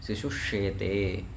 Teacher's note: तालव्य शकार क्यों हो जाएगा, क्योंकि बाद में यहाँ तालव्य शकार है तो दंत्य सकार के स्थान में तालव्य शकार हो जाएगा